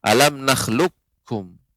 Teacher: huruf qaf dimasukkan diteguhkan ke dalam huruf Kaf tanpa tersisa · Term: Idgham Kamil